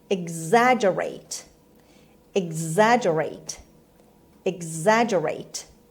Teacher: stress is on the second syllable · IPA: /ɪɡˈzædʒəreɪt/